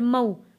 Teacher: واو ساکن سے پہلے زبر ہے، حروف لین، اس لیے ہم اس کو جلدی اور نرمی سے پڑھ رہے ہیں